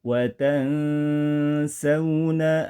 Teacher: hukum bacaannya cara seperti ini dalam ilmu tajwid disebut dengan Ikhfa membaca nun mati dengan bunyi Yang samar-samar pertengahan antara izhar dan idgham disertai dengung